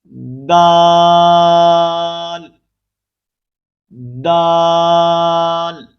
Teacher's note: زبان کی نوک کو سامنے والے اوپر کے دو دانتوں کی جڑ سے لگا کر باریک آواز میں پڑھیں گے